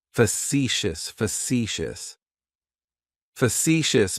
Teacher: That first syllable has that schwah, that uh sound.